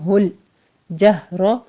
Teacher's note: لام کو آپ نے سٹاپ کرنا ہے، ہولو نہیں کہنا آپ نے